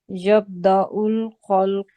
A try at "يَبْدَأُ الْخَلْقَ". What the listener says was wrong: تھوڑا سا کلکلا یہاں کرتے ہوئے آئیں.